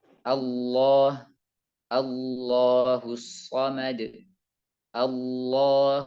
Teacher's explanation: ujung lidah sudah nempel ke atas maka ditambah lagi untuk menebalkannya dengan mengangkat pangkal lidah dan membuat lidah seperti cekungan yang mengakibatkan suara naik ke langit-langit atas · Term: lam tebal